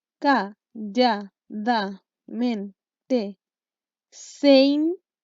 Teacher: Porque se formó una sinalefa. Sinalefa, termino con una vocal y comienzo con otra vocal en la siguiente palabra, por lo tanto se juntan y forman una sola sílaba. Entonces ahí vamos en la sílaba número 6 porque estas dos se fusionaron.